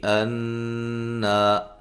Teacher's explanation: نون مشدد پہ غنہ ضروری ہے اور الف مدہ